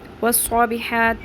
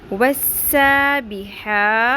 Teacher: سین کو پر نہیں کرنا ورنہ صاد بن جائے گا